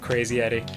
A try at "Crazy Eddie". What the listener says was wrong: Sounds like you're saying Crazy Yeti.